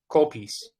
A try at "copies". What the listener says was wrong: Not call piece, but copies. I see. So, the the pronunciation is copies. Copies. It's like a ah.